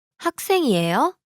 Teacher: here the question is formed by the rising intonation